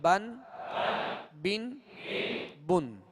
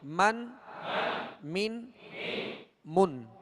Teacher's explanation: اب یہ دونوں جو حرف ہیں با اور میم، اب مخارج کی لسٹ میں دیکھیں گے تو با کا جو مخرج ہے وہ دونوں ہونٹوں کے تر حصے سے، اور میم کا جو مخرج ہے وہ دونوں ہونٹوں کے خشک حصے سے ادا ہوتا ہے